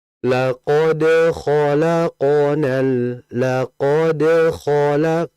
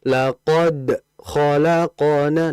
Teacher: Antara pantulan dal dengan huruf kha-nya enggak ada pemisah.